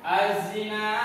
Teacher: Tapi alnya tidak dibaca. Keberadaannya dianggap tidak ada. Tapi ada, tapi tidak terbaca. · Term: alif lam syamsiyah